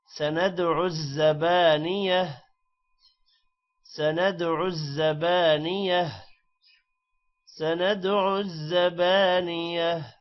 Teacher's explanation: سَنَدْعُ دال پر قلقلہ ہے. زبانیہ تا ہا میں کنورٹ ہو جائے گا وقف کی وجہ سے